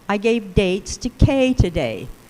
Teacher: o acento frasal está em K. Né? E aí, portanto, na grade métrica também é esse ponto que leva ao maior, que tem maior nível de acento.